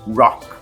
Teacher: para você se referir ao estilo musical rock, eu vou ter que pronunciar com esse R enrolado, R retroflexo, e o CH mudo